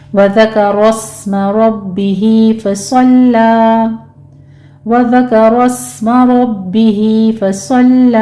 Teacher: لام کو موٹا نہیں کرنا، لام کو باریک رکھنا ہے، اور مدی بس کر لیں گے، یعنی 2 کاؤنٹ کر لینا ہے۔